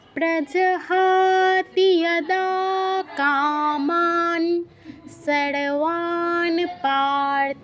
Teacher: প্রজহাতি বলা যাবে না, তিতে দীর্ঘ করা যাবে না। অনেকেই করবেন, আমি জানি, আগে থেকেই বলে দিচ্ছি, তিতে দীর্ঘ করবেন না।